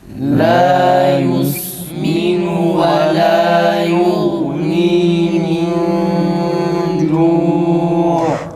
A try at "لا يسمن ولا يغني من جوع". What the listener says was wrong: Gayn boğazdan çıksın. Ve la yughni. Bir de acele etmeyelim.